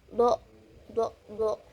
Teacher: posisi pita suaranya itu majhur, posisi rongga mulutnya itu tebal